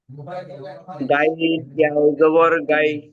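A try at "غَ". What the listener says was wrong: দেখেন গাইন নয় গয়িন পড়েন, গয়িন ইয়া জাবার গয়।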